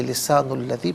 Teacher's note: لسانوں میں نون پر پیش ہے، اسے الذی کی لام کے ساتھ ملائیں گے، درمیان میں سے الف یعنی حمزہ کو حذف کریں گے